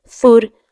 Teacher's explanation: سا کی آواز کو نکالنا ہے بغیر سیٹی کے، نرمی کے ساتھ